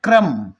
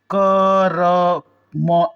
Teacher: क पूरा नहीं बोले क र म ऐसे नहीं बोले क्र क्र तो अ का साउंड क्र तो क्रम में क को पूरा नहीं बोलेंगे आधा क को जल्दी से बोलेंगे